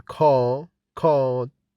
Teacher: the r is not pronounced after a vowel like in car card both hear and heard the r